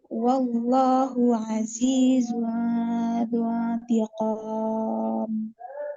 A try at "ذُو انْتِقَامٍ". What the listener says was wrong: Kurang bingungnya di ikhfa zunti ya.